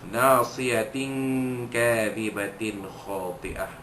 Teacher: Nasiyah ana man asli, siyatin kadhibah, tanwin pada ta marbutah, ta bulat pada nasiyah itu bertemu dengan huruf kaf, maka hukumnya ikhfa hakiki, menyembunyikan bunyi tanwin yang bertemu dengan huruf kaf berserta dengung